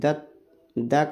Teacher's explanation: द का उच्चारण स्थान दंत